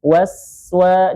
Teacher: Sin-nya dialirkan suaranya terlebih dahulu.